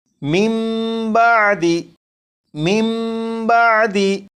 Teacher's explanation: نون ساکن کو میم سے بدل کر غنہ کر کے پڑھیں گے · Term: اقلاب